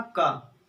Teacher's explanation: जैसे हमने कहा का, थोड़ी अल्प वायु निकली, मतलब अल्प प्राण हो गया